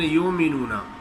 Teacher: حمزے کو ادا نہیں کرتے، واو پڑھتے ہیں